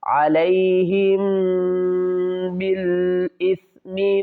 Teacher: یہاں پر میم ساکن کے بعد اگر با آ جائے تو میم پر ہم غنہ کریں گے